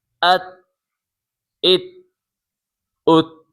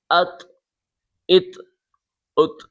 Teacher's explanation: حمزہ طا زبر ات، اب یہ بڑی طا ہے، اسے موٹا کرنا ہے۔ پہلے والی تا باریک تھی، اب یہ والی طا موٹی ہے